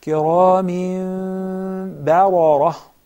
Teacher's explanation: So ba muraqqaqa, then ra mufakhama. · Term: tarqiq